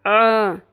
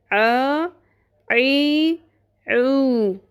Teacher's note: حلق کے وسط میں سے آواز نکالنی ہے، ورنہ وہ حمزہ بن جائے گا، تبدیلی حرف ہو جائے گا۔ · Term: آئین